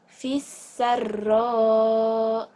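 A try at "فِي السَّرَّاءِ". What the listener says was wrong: Fisarra. Mad wajib mutasil ya, panjang.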